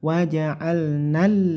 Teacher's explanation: dibaca lamnya ditekan ya lamnya ditekan karena ada tasydid tidak lama-lama berlama-lama atau mendengung di Lam wa'alnal tidak tapi singkat